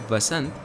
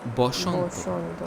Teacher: Bengali similarly has Shwa in it, but interestingly, it's not A, it's O. Therefore, the Hindi word Vasant, which in Sanskrit would be Vasanta, in Bengali becomes Boshanto.